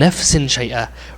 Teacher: That tanween should have been hidden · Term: ikhfa